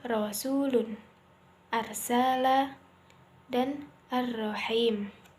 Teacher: bergetarnya ujung lidah ketika mengucapkan huruf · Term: takrir